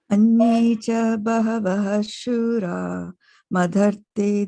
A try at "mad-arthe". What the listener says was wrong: Mad-arthe. Mad-arthe. Mad-arthe. Not mud. Mud. Mud. Soft D. Soft D. Mad-arthe. But even if you join it, right? If you join the two, it does not become MADH. Mad-arthe remains mad-arthe. become, it doesn't become mud. yeah, watch for that DH there.